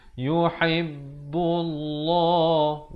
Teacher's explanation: Di sini lafaz jalalah dibacakan dengan tebal, datang sebelumnya baris dhammah.